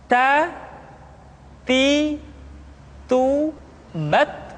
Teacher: lidah kita dengan gusi-gusi gigi seri bagian atas ta kemudian huruf ta ketika diucap terdengar ada nafas yang mengalir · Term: sifat alhamas